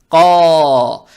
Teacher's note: Теперь далее стоит буква Каф, она твердая с фатхой. Фатха приобретает оттенок О. Эту же фатху тянем в 2 шота за счет алифа без огласовок.